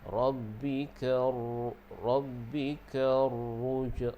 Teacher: Rabbika ra yang ada syaddah tu lagi tebal lah.